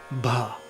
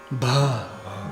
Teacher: And what that H means is that we're going to aspirate that word, that letter B.